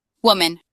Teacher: putting the emphasis at the beginning of the word